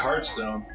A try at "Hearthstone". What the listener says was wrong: Hearthstone! Hearthstone. No, it's Hearth with an H. It's Hearthstone.